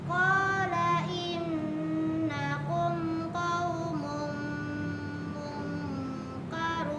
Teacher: dibaca didengungkan selama tiga harakat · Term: Idgham Mimi